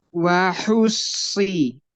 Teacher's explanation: waktu wahus itu hanya tipis dulu baru sodnya tebal.